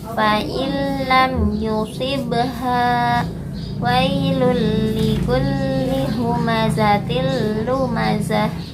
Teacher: memasukkan nun sukun atau tanwin ke huruf berikutnya tanpa disertai dengung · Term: Idgham bilaguna